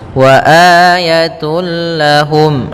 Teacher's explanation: langsung masuk lam dan tanwinnya hilang suaranya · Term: idgham bila gunnah